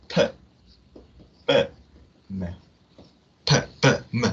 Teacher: bilabial sound는 자, 이거는 양 입술, 이 양 입술에서 나는 소리입니다.